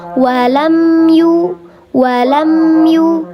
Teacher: Karena mim ini huruf bibir, maka namanya syafawi. Huruf bibir yang dibaca jelas. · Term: izhar syafawi